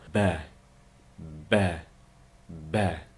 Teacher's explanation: Ostinqi va ustunki ikkilavining bir-biriga tegishi bilan chiqadi.